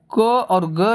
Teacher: क और ग जो होते हैं वह अल्प प्राण होते हैं